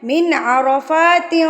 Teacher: نون ساکن پہ ہم نے کیا کرنا ہے؟ اظہار کرنا ہے، یعنی کہ فوری سے پڑھنا ہے